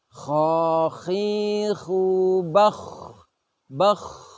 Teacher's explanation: huruf kha ini, menimbulkan suara seperti suara orang sedang tidur kemudian mendengkur.